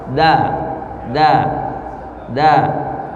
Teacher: Beda sama huruf ta, hamas. Keluar hembusan nafas. Kalau da tertahan.